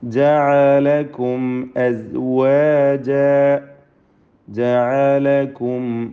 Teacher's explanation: ഐന് വ്യക്തമാക്കി ഉച്ചരിക്കണം. അത് ഹംസ പോലെ ഒന്നും ആയി പോകരുത്. സാക്കിന മീമിനെ ഇൽഹാർ ഷഫവി ചെയ്ത് മണിക്കാതെ വെളിവാക്കണം.